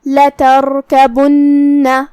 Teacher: کلمت لتركبن جو کہ شروعات میں لام پہ زبر ہے تو ہمیں لام کو زبر سے ادا کرنا ہے اور اسے ظاہر کرنا ہے، جو کہ را پہ جزم ہے تو یہاں را کا حکم ہوگا تفخیم کیونکہ اس سے پہلے والے حرف پہ تا پہ زبر ہے، تو ہمیں را کو بھاری آواز میں پڑھنا ہے · آخری میں نون پہ تشدید ہے تو 2 حرف کے برابر ہم نون کو پڑھیں گے